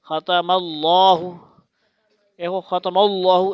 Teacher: اللہ کا جو لام ہے، یہ یاد رکھنا، کھڑا زبر والا وہ موٹا پڑ جاتا ہے۔